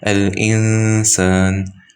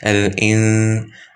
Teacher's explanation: Only the gunna is there, but the noon itself is invisible.